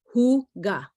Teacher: there's kind of a guttural H in for that particular word, but if you think of it as HOOGA, you'll be right on target.